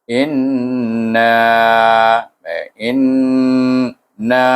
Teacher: nun itu berdengung bunyinya sebab dia adalah nun bertasydid dibaca dengan wajibul gunnah dengan gunnah dua harakah